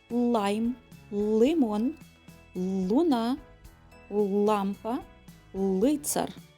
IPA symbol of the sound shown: л